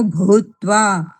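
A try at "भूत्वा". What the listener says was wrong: ભૂત્વા. ભૂ દીર્ઘ છે, બરાબર? ભૂત્વા નહીં.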